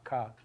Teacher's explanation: Uvulars are kind of like K, except more so. So for a K, your back of your tongue is hitting the back of your mouth. It's touching your velum. That's a K sound.